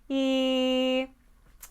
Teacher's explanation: an e is high and forward, we can actually move our head to help us and let gravity help us with making these sounds.